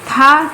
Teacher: था दंत, स्पर्श, आघोष और महाप्राण है।